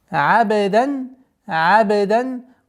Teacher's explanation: Полностью произносим танвин, так как здесь правило изхар, ясное произношение.